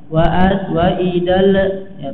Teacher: pada huruf lamnya nggak boleh ada pantulan suara atau qalqalah ya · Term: alif lam